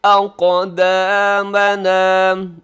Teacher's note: قاف موٹا بھی ہے اور قلقلہ بھی ہے۔